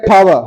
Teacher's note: British में टा बोला नहीं जाता, वो ठा बोलते हैं। जैसे बंदूक की गोली नहीं निकलती ठा ठा ठा, तो ये है ठावा।